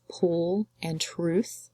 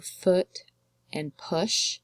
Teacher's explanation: these long O's will make your lips pucker more as opposed to foot and push where your lips will open more as opposed to puckering